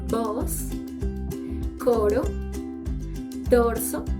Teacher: The O is a round later semi-closed vowel and its pronunciation is O.